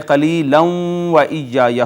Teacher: یہ ادغام ہو چکا ہے، نون تنوین واو میں جا چکی ہے